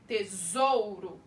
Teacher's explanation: O O, eu tô ouvindo ele bem mais alto que o U. Então, é a minha vogal e o U é a minha semivogal.